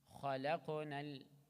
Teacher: kha and qaf both heavy, but qaf has qalqala too